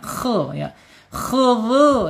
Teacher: makhrajnya ada di tenggorokan atas ya. Ya harus ada agak ngorok dikit nggak apa-apa ya.